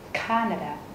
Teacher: Trọng âm rơi vào chữ A đầu tiên. Các bạn nhấn mạnh hơn một chút.